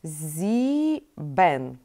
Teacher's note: Нам нужно произнести и длинненькие и ещё короткое э